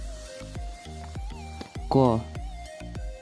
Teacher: उच्चारण स्थानको आधारमा कण्ठ्य हो, प्राणत्वको आधारमा अल्पप्राण हो